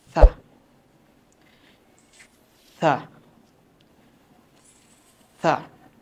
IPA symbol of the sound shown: θ